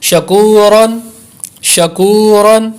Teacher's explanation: پیچھے ہم نے پڑھا تھا کہ را کے اوپر زبر ہو تو را کو پر کریں گے، اور یہاں یہ قاعدہ سمجھ لیں کہ اگر را کے اوپر دو زبریں ہوں تو پھر بھی را کو پر یعنی موٹا کر کے پڑھیں گے